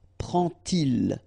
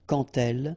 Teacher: you won't pronounce it like d to make the liaison, but you will pronounce it like t